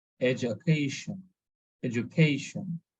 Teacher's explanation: So there is a stress on CA